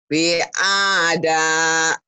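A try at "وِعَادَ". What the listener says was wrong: Wi-nya panjang. Semua panjang. Semua panjang. Semua panjang. Wi'ada.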